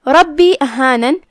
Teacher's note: مد جائز منفصل ہے تو ہم اپنی آواز 2 سے 4 مد کے برابر لمبی کریں گے. کلمت احانن میں یہاں جو کہ 2 نون ہیں تو ہم دونوں کو ظاہر کریں گے، آخری میں ہم اس پہ رکیں گے تو جزم سے رکیں گے.